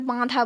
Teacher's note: তো এই যে জিনিসগুলোকে আমরা, অর্থাৎ এগুলো মূলত কথা বলার ক্ষেত্রে হয়, তার জন্য কিন্তু এটাকে অনুনাসিক স্বরধ্বনি বলা হয়, অর্থাৎ নাক এবং মুখ দিয়ে শ্বাসবায়ু একসাথে যাতায়াতের ফলে এই স্বরধ্বনিটা উৎপন্ন হয়